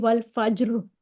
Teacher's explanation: ہم را کو پر کر کے پڑھیں گے، را کی تفخیم کے ساتھ پڑھیں گے